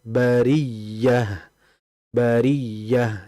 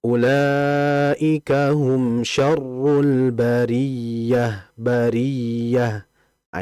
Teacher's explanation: Jadi nabar itu suara yang sedikit keangkat ya. Suara yang ee meninggi ya. suara yang memang ee agak tinggi menandakan kalau itu huruf yang bertasydid bukan seperti ini.